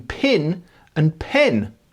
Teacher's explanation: In many parts of the South, the distinction between pin and pen has been lost.